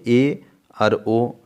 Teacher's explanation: এই দুটি স্বরধ্বনির উচ্চারণের সময় জিহ্বার অগ্রভাগ কিছুটা উপরের দিকে থাকছে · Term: উচ্চ মধ্য